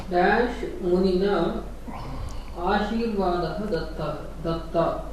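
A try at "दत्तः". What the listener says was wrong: Dattaha should be there, because Visarga printed, not printed. Because Ashirvada Shabda is Pullinga, therefore Datta also become Dattaha. So Dattaha, make one correction there, Visarga put.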